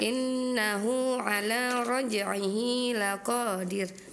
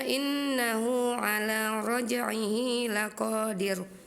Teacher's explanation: Ya, dibacanya r tarqik tipis ya, Kak.